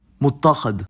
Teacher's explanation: the mu prefix on a lot of verbal derivations doesn't get stressed